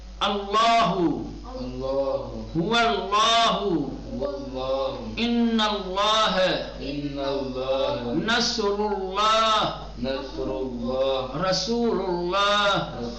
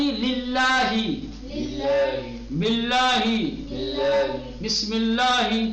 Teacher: جب لام سے پہلے والے حرف پر پیش یا زبر ہوگا تو لام کو تغلیظ کے ساتھ موٹا اور پرحجم بنا کر ادا کریں گے، اور اگر لام سے پہلے والے حرف پر زیر ہے تو لام کو ترقیق کے ساتھ پڑھیں گے.